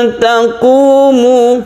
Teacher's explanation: ketika kita baca nun, kita bersiap membaca ta, itu artinya ikhfa. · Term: ikhfa hakiki